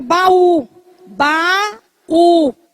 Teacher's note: É o encontro de duas vogais em sílabas separadas. Observe que a palavra baú, baú, tá formando o iato, do a com o u.